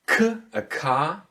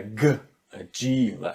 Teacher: K is a deaf sound, so it is the hard one. And if you go for G, this is a quite distinct one, so it's a soft one.